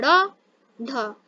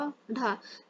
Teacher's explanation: वे व्यंजन जिनके उच्चारण में जिह्वा झटके से ऊपर की ओर उठती है, जिनमें जिह्वा झटके से ऊपर की ओर उठती है, यानी कि हम जब इनको बोलते हैं तो हमारी जिह्वा जो होती है, हमारी जीभ जो होती है झटके से ऊपर जाती है। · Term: उक्षिप्त व्यंजन